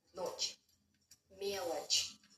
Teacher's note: ch doesn't ever sound as hard ch. Only as a soft ch.